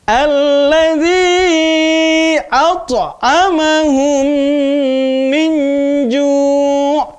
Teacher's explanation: Ya, harus kedengaran qalqalahnya. Harus kedengaran suara berlebihnya, ya.